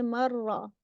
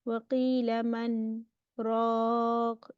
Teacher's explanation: Okay, this is the only exception, and it is shown by, you will see a small little scene on top of it. Okay, and it's called sakt. That's a breathless pause. So we read it as waqila man raq.